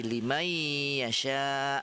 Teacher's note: Sekarang apa itu dia? Yaitu memasukkan bunyi nun sukun atau tanwin ini ke dalam huruf berikutnya dengan menampakkan suara dengungan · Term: idgham bi gunnah